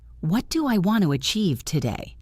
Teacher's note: Say it with falling intonation, sounding determined.